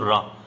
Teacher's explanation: उच्चारण में जीभ कंपित होती है या हिल जाती है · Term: प्रकंपित वर्ण